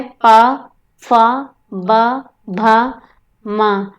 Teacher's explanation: जिनमें केवल दोनों ओठों के स्पर्श से ही उच्चारण होता है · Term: ओष्ठ